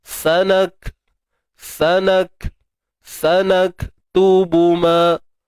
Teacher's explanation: Untuk kaf ni, tuan-tuan dan puan, macam biasa, ada 2 sifat yang perlu diselesaikan. Yang pertama syiddah, tahan suara. Sanak. Tahan dulu suara. Itu syiddah. Kemudian baru hams, lepaskan nafas.